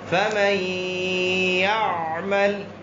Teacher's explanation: نون کو یا میں داخل کریں گے اور ساتھ غنہ ہوگا. فمن یعمل، جس طرح غنہ ایک الف کی مقدار ہوتا ہے اس طرح ادغام بھی ایک الف کی مقدار ہوگی. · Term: ادغام مع الغنہ